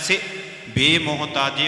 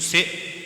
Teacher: ਸ ਨੂੰ ਸਿਹਾਰੀ ਲੱਗੀ ਹ ਜੀ ਵੇਖੋ ਇਹਨੂੰ ਸਿ ਇਸ ਢੰਗ ਨਾਲ ਇਹਨੂੰ ਸੇ ਲੰਮਾ ਨਹੀਂ ਕਰਨਾ